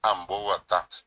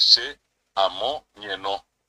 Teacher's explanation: Cuando yo digo el verbo guatá tiene la G, pero es oral.